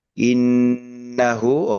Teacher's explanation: Nun tasdid itu eh kita perlama tempo dengungannya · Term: non tasdid